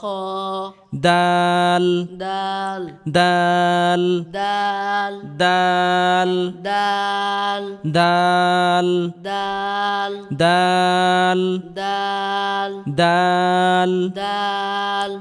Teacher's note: জিহ্বার আগা সামনের উপরের দুই দাঁতের আগা থেকে উচ্চারণ করতে হবে।